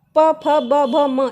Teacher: मूर्धन्य में ट, ठ, ड, ढ, ण, दंत में त थ द ध न, ओष्ठ में देखिए प फ ब भ म, इनको बोलने में हमारे लिप्स जॉइंट हो जाते हैं, प फ ब भ म, इसीलिए ये ओष्ठ हैं।